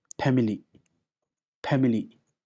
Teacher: since the sound is not there in Zonka, right? We use the sound of p